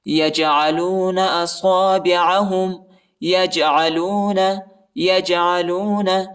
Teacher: جیم کے اوپر بھی قلقلہ ہم نے کرنا ہے، ادھر جو ہے جھٹکا دینا ہے، ٹھیک ہے، جیم کو۔